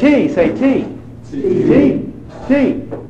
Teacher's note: Where's the air stopped in the mouth? T. Behind the teeth. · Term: dentals